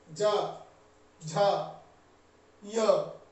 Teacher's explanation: वैसे य कहने से जीभ का तालु से स्पर्श होता है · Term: तालव्य